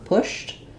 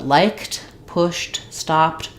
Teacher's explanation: Then when you're talking about a verb like pushed, because the SH is voiceless, my voice is not on, pushed, I don't voice the D anymore. So that ED becomes a T sound. It sounds like pushed.